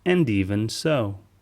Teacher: when he says and even so we hear and even so the d sound in and fades away and and even combines to sound like an even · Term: connected speech